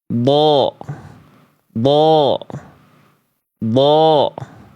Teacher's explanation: Nah, pangkal lidah huruf DD naik ya. Tuh, pangkal lidahnya naik karena dia huruf tebal. Dia enggak datar ke bawah tapi naik.